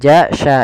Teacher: makhraj daripada huruf syin makhrajnya adalah tengah lidah kita